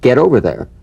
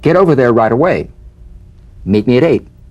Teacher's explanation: the final t when it's followed by a word beginning with a vowel again it becomes in effect a medial t there's a vowel on both sides of it so it could